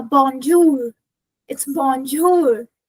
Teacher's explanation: it needs to be pronounced from the back of your throat. It's more like a gluting sign uh sound when you clear your throat more uh like that. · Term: final r sound in French